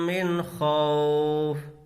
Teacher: نون کی آواز کو ظاہر کر کے بغیر غنہ کے پڑھیں گے۔ قاعدہ ہے تنوین یا نون ساکن کے بعد حروف حلقی میں سے کوئی حرف آئے تو نون کی آواز کو ظاہر کر کے بغیر غنہ کے پڑھیں گے۔